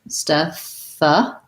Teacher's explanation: We have the red tent vowel, so it sounds like eh, and then the voiceless th.